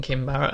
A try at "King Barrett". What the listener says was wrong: You said Kim. You said Kim Barrett.